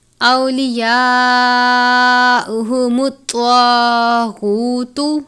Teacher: حمزہ واو زبر او، واو ساکن سے پہلے زبر ہے واو لین، یا کے اوپر کھڑی زبر ہے 1 الف، بڑی مد ہے 4 یا 5 حرکات یا 4 یا 5 الف کے جتنا لمبا کر کے پڑھنا ہے۔